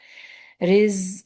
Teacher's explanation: tip of the ٹنگ نیچے والے دانت کے اندرونی سرا پہ، آواز میں بزنگ کیونکہ آواز ہے ہمس نہیں ہے، آواز جب باریک نالوں سے گزرے گی تو بز کی ساؤنڈ بنائے گی